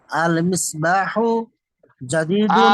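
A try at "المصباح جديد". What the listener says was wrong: আল টান আছে।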